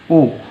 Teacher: ओ का जो उच्चारण स्थान है वो कंठोष्ठ है